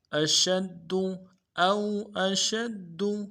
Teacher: ادا کریں گے، شین کو حرف تفشی واضح کریں گے، اور شین کو دال کے ساتھ ملانا ہے، دال کے اوپر تشدید ہے، زور دیں گے ، اگلے دال کو نرمی سے ادا کریں گے، اشد او